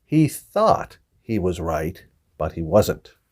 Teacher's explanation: people are saying this th word thought but they're saying it with an S sound sawed